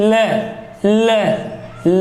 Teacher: साइडों से निकल रही मतलब अगल बगल से निकल रही है, मुंह में जिह्वा के द्वारा हवा रोकने से इधर उधर से निकल रही है, इसलिए वो पार्श्विक वर्ण कहला रही है।